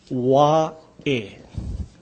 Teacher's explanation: This is the Okina, or the glottal stop. That's the punching sound.